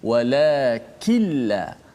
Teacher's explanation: kita kena masukkan nun tu dalam lam secara semua. Walakilla, nun dah tak ada.